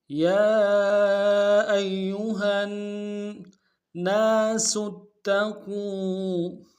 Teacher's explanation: ناس میں نون کے ساتھ الف مد ایک دار میں کھینچیں گے